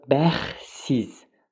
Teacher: Bəxsiz t düşəcək tələffüzdə. Deməli, düşdüyünə görə bərabər olmayacaq.